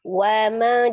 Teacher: Jadi hanya dimajukan kedua bibir untuk pembentukan harokat di huruf wawu saja, tapi dia tidak dipanjangkan, harokatnya pendek. Jadi bukan wama.